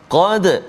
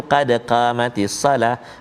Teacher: Qad huruf Qaf baris atas, maka teballah kita baca. Qad, jangan kita baca tipis.